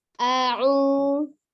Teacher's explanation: A dari tenggorokan bawah. A'u, tenggorokan tengah u-nya.